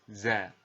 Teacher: Tapi ingat, huruf za ini ya bersifat al-jahr, yang artinya ketika kita mengucapkan huruf za, suara kita mengalir akan tetapi nafas tidak boleh mengalir